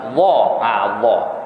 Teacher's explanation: Jadi bila sebut huruf dha pasti pangkal lidah terangkat.